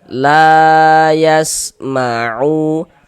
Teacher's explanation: la kita baca panjang, mad tabi'i panjangnya 2 harokat